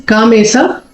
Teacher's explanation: Ka has a dirgha and ma has a dirgha. Ka has a a dirgha, ma has a e dirgha.